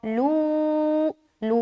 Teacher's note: लू को बारीक रखना है क्योंकि लाम बारीक हर्फ है और बारीक हर्फ के साथ मद्दा बन रहा है, तो इसको हम बारीक रखेंगे।